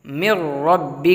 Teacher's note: تشدید سے پہلے نون ہے اور نون پر جزم ہے، اس لیے نون کو را میں نہیں ملا سکتے، اس لیے یہاں پر میم کو را میں ملائیں گے ہم